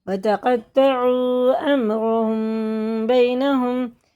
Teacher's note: میم ساکن کے بعد آ رہا ہے با، تو یہ غنہ اخفا کر کے پڑھیں گے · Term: اخفا شفوی